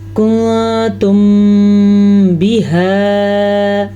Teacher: میم ساکن کے بعد جب حرف با آ جائے تو وہاں پہ دونوں ہونٹ بند ہو جاتے ہیں اور غنہ پیدا ہوتا ہے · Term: اخفاء شفوی